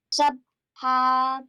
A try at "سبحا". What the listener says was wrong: No, we have to apply kalkal on ba. Come on. Sabha.